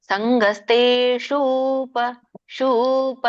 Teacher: ಶು ಸಣ್ಣ ಊ ತಗೊಂಡ್ರಿ ನೀವಲ್ಲಿ ಶುಪಕ್ಕೆ. ಸಂಗಸ್ತೇಷೂಪ ಶೂಪ ಹೇಳ್ಬೇಕು